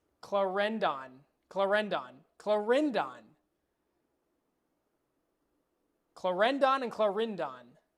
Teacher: Don't emphasize the O on Don.